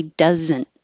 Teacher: you don't have to say the t after the n here you can say doesn't and now it will sound like dozen